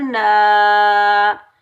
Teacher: नून के ऊपर ज़बर आगे अलिफ खाली है, ये अलिफ मद्दा है, इसको हम एक अलिफ की मिकदार में खींच कर अदा करेंगे।